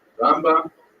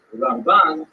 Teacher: Rambam is pronounced with the emphasis on the first syllable, Rambam, and Ramban is pronounced with the emphasis on the second syllable